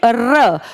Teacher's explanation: आप अपनी जीभ को ऊपर ले जाएंगे और अपनी जीभ को आप बेलन की तरह गोल मोड़ेंगे · र बोलते टाइम आपकी जबान ऊपर गई, उसने मूर्धा को टच किया और बेलन की तरह वो मुड़ी और फिर ये साउंड क्रिएट की। क्योंकि बेलन की तरह घूमी इसलिए इसको कहा जाता है लुंठित।